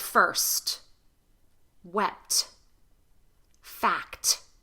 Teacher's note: When T is a part of a consonant cluster at the end of a word, especially, pronounce it as a true T. So a consonant cluster is just T with another consonant in front of it, two consonants together.